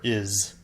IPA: -ɪz